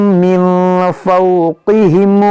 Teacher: یہاں نون ساکن کے بعد فا یہاں پر اخفا ہوگا